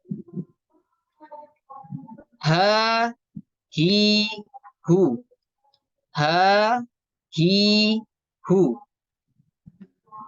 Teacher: H, nafasnya berhembus. Kemudian tekanan suaranya itu dia rokhwah, lunak, dan tidak tertahan.